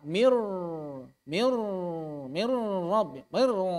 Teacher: Takrirkan ra-nya mir rabbihim, jangan sampai hilang takrirnya. Karena kalau pakai gunnah takrirnya hilang. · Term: idgham bila gunnah